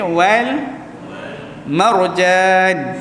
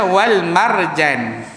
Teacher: huruf ra tu mesti ditebalkan sikit, muncung sedikit